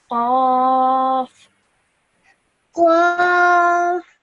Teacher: you pronounce this from the middle of your throat, and it's a nice heavy sound